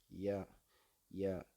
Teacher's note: அடுத்து யா, இது நாக்கின் அடி மேல்வாயின் அடியை பொருத்துவதால் இது தோன்றுகிறது. ய ய நாக்க மேல்வாயின் அடியை பொருத்துவதால் ய உண்டாகிறது